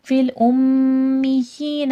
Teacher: ام پہ میم مشدد غنہ ہوگا